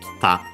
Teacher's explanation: the accent moves also on the ta, kita